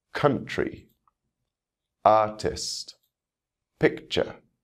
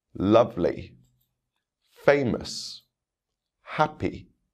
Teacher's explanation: you can hear the stress on the first syllable of these words